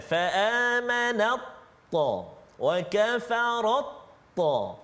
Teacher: Ta sifat lain, ta ada sifat tebal dia. Jadi masuk bunyi ta tu ke dalam ta, komplit, sempurna maksud dia. Tak ada bunyi ta tu, dia terus pergi. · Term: idgham